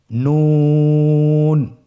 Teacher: নুন হরফটি উচ্চারণের ক্ষেত্রে অবশ্যই পাতলা করে উচ্চারণ করতে হবে এবং 3 আলিফ টেনে পড়তে হবে। · নুন হরফটির উচ্চারণ স্থান হচ্ছে জিহ্বার আগা তার বরাবর উপরে তালুর সঙ্গে লাগিয়ে উচ্চারিত হয়।